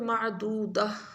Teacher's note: وقف کریں گے تو معدودہ، معدودہ تا نہیں پڑھیں گے، معدودہ، ہا کی آواز آئے گی، تا کی نہیں آئے گی